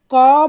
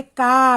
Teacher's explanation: इसमें क बोला तो हमारा थोड़ा मुंह खुला, लेकिन इसमें हमने का बोला तो हमारा ज्यादा मुंह खुला